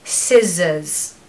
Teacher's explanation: We don't pronounce the R because it falls after the vowel sound, so scissors, scissors. So it's a Z sound in the middle, it's not an S. So we want the true S to start and then we want a Z in the middle, so scissors.